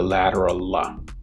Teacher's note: the tongue tip rests on the alveolar ridge and air flows over the sides of the tongue